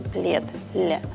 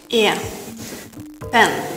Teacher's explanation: Русский «е» смягчает предыдущую согласную, и поэтому мы произносим «плед», «ле». Английский этого не делает. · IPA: [e]